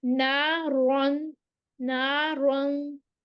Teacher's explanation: रॉ, इसको फिर हम मोटा पढ़ेंगे, रॉ के ऊपर जबर होती है, मुफख्खम होती है, ये मोटी पढ़ी जाती है। नारन नारन ज़ात अलिफ मद्दा, ये नारवंग, ये इसके हम यहाँ पे जो है वो इख्फा कर रहे हैं, नून की छुपी हुई आवाज आएगी।